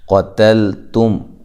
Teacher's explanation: قاف کو موٹا کرنا ہے، تا کو باریک، لام باریک، تا باریک ہے، میم ساکنہ کا یہاں اظہار ہے۔